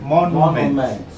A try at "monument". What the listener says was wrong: You are moving faster. I want us to get something. This is nu. Na, ne, ni, no, nu. Nu. And then what?